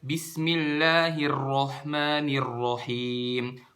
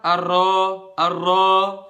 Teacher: suaranya ditebalkan jadi suaranya itu naik ke atas langit-langit bukan ke depan kalau ke depan suara arrow arrow kayak gitu kan tapi suaranya